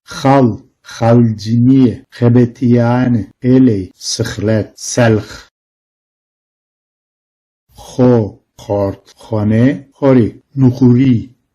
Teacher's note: Boğazdan gelen gırtlaksı bir H sesidir bu aslında.